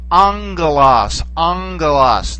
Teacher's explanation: when you have the two gammas put together, it doesn't sound like a g, it sounds like an ng, okay, ng, like the sound that you'd get from putting the English ng together.